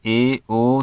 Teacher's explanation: अर्ध संवत जिन स्वरों के उच्चारण मुख द्वार आधा बंद रहता है